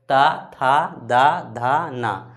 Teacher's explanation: तो त वर्ग का उच्चारण स्थान क्या हो जाएगा? दंत। दांत में सटेगा मतलब दंत।